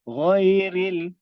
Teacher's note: ra di hujung lidah dan ghain di bahagian tekak sana. Okey, di kerungkung kita ghain.